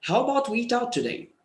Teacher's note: So when you rise today, it gives the feeling that you're not sure of the answer.